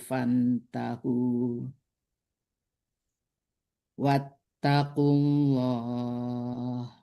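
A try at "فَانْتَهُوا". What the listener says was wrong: Dengung di fantahu. Dengung di fantahunya itu.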